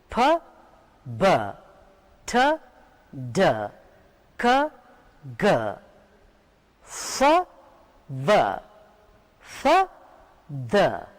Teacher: there was some blockage, some obstruction in the mouth when I was saying these sounds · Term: consonant sounds